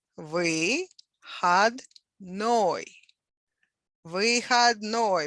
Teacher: Выходной with a stress on the last syllable.